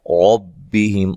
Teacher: ربہم، را کو موٹا ادا کریں گے، را کے اوپر زبر ہے، اور یہاں میم ساکن کا اظہار ہے، غنہ نہیں کریں گے